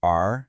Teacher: That's a falling fourth tone.